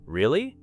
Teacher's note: You answer with a bright rising, really? Your voice communicates surprise and excitement.